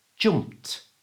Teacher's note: let's take this word if we remove the Ed ending then we're left with P which is a voiceless sound so we're going to use our voiceless t ending